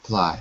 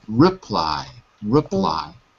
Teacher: when you're reading quickly you're dropping the r sound and you're saying hly like in Portuguese so reply reply okay